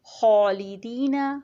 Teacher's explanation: جو خا کے ساتھ الف ہے اس کو موٹا پڑھا گیا ہے